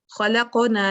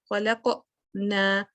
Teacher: लेकिन अगर बीच में आपने रोक दिया न, खलक न, तो वो एक तो आपने गैप दे दिया कॉफ और नून के दरमियान में, दूसरा आपने हमजा कहीं ना कहीं उसमें ऐड कर दिया